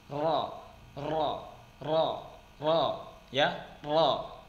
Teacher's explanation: huruf ra dia ada sedikit punggung lidahnya mengenai langit-langit sehingga ada getaran. Ro, ya, ro memasukkan punggung lidah tersebut.